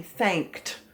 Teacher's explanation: is unusual because the ed sounds like a t thanked so the suffix actually has a vowel but it doesn't have a vowel sound so it's only going to be one syllable